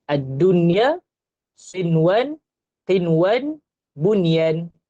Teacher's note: Nun mati jumpa ya dan juga waw, tetapi tidak dibaca dengung. Kita baca dengan jelas.